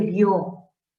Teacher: por naturaleza recae la fuerza de voz en la O, porque es la vocal fuerte, la vocal abierta, ¿no? Sin necesidad de tilde, ahí vemos que la fuerza de voz recae en la O. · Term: diptongo